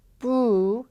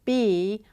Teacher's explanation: the boo starts with very rounded lips versus B, which starts with retracted lips